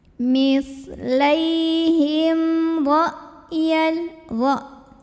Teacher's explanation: Kemudian ada izhar syafawi karena ada mim sukun ketemu sama huruf selain mim dan ba yaitu huruf ra, maka dibaca mim sukunnya jelas, bunyi tidak perlu kita tahan bunyi emnya